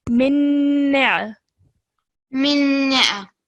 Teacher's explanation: the sound of the shadda will be produced, because in recitation, the shadda sound is stronger than a sakin letter. So we would say this as ghunna sound.